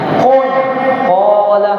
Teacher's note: orang Arab memang dia ketika membaca qala dipanjangkan alifnya, qala. Makanya dinamakan tabi'i karena memang tabiatnya dia dibaca panjang. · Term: mat tabi'i